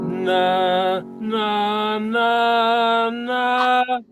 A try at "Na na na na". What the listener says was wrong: That's sharp. Na na na na na.